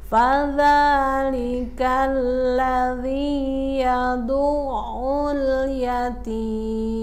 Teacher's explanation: Yadu'ul, hati-hati alif lam tidak mantul. Yatim, bunyi taknya tidak digigit tapi di belakang gigi atas